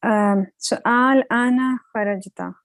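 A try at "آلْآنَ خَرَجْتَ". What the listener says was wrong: You just make it longer. So you just make it slightly longer to show that there's a question mark in front of it.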